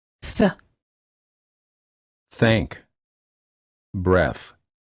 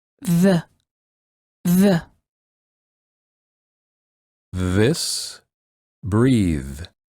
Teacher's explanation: of the front teeth or the edges of the front teeth the air flows out between the tongue and the teeth